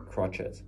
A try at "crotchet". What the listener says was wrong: Not crotcha. Crotchet. See it?